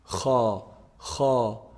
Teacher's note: So kha is actually the closest throat letter to the mouth.